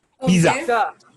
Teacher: There is a small T sound in between.